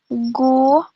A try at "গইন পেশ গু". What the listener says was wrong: হলো না, গয়েনের উচ্চারণ হয় নাই। গইন গু, গইন পেশ গু, গইন ওয়াও পেশ গু। আরো একটু সুন্দর হতে হবে, ওকে?